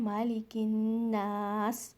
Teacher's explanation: Next आयत मालिकिन्नास, यहाँ पर फिर से हमज़तुल वसल मीन्स साइलेंट अलिफ, ये अलिफ नहीं पढ़ा जाएगा, काफ को आपने नून में मिलाना है। मालिकिन गुन्ना के साथ, नून मुशद्दद मीन्स यहाँ पर आपने गुन्ना करना है, मालिकिन्नास।